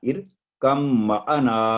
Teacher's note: با پر جو جزم ہے وہ سائلنٹ ہوگی، اس کو بالکل ٹچ بھی نہیں کرنا. ارکم معنا، جیسے با ہے ہی نہیں، ایسے ہی اس کو پڑھنا ہے.